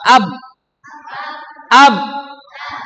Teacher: Huruf ba, makhrajnya di dua bibir. Maka kita harus rapatkan dua bibir kita.